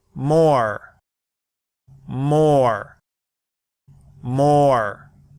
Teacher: when the R follows a vowel, the R simply adds color to the vowel and we don't make the R mouth shape.